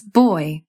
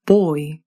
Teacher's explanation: RP starts further down at the same spot as o, as in court.